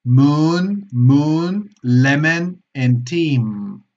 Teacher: la M bilabial presionando ambos labios